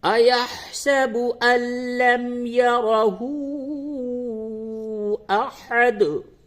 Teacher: یہاں نون ساکن کے بعد لام ہے، ادغام ہوگا لیکن بلا غنہ، ادغام بلا غنہ